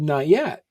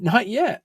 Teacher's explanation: in New England we have that glottal stop